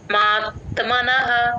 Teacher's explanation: మ కి త ని జాయిన్ చేసి చెప్పాలి మాత్ మాత్మన అని అనేయకుండా మాత్మనః డిఫరెన్స్ అబ్సర్వ్ చేసుకోండి సంయుక్తాక్షరం వచ్చినప్పుడు ముందు